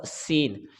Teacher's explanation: سین میں سیٹی کی آواز آتی ہے، یہ حروف صفیریہ میں سے ہے، اور یہ اس کو ہم سا کی آواز نرمی کے ساتھ ہم پڑھیں گے، سیٹی کی آواز یہاں پہ شمار نہیں ہوگی۔